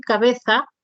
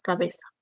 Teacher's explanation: dialecto peninsular es el uso del ceseeo lo que mencionábamos no reemplazar la interdental por ese